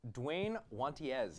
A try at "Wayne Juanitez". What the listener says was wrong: But it's actually Wayne Juanitez. The D is silent.